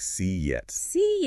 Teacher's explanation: speakers often insert a very slight extra sound, usually a J sound like in yes, or a W sound like in wet. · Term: vowel-to-vowel linking